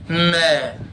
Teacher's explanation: बोलकर देख लो बिना नाक से हवा निकाले. न, पहले नाक से हवा निकलेगी तब जाके न बोल पाएंगे · न बोलने के लिए नाक से हवा निकालनी पड़ेगी.